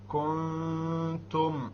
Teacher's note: the noon sakina followed by a ta. Once again, ikhfa.